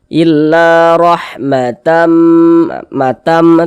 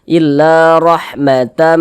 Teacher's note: kita tahan kita panjangkan sejak didengungkan sepanjang dua harakat dengungnya itu illa rahmatam Minna di sini ada huruf nun bertasydid Tanda tasdid